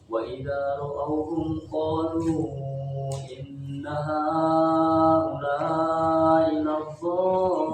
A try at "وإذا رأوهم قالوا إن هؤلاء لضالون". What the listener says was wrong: Jangan tasdid, jangan laddo tapi ya. Laddo biasa, laddo. Nanti yang tasdidnya di lamnya. Ya, jangan laddo. Tapi inna haula'i laddo. Jangan laddo tapi laddon.